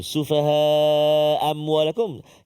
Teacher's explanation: Sufaha tu yang kita jaga dia ada dua hamzah. Yang kita baca satu. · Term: Hilang satu hamzah